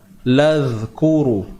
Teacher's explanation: Jadi huruf zal ni kita kena keluarkan hujung lidah kita.